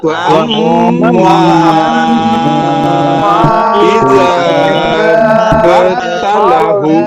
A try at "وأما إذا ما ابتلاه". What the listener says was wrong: মা বেতালা একটু টান হবে, একালিফ টান, ও আম্মা ইযা মা বেতালাহু